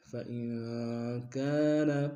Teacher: مدہ کے دار میں کھینچیں گے، إلا أن يصدقوا، فإن كان، فإن میں نون ساکن غنہ کریں گے،